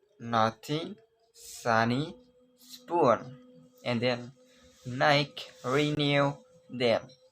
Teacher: Your vocal cord are vibrate when we produce this sound, and it's called voice alveolar · The tip of the tongue touch just behind the teeth. The air escape through the nose.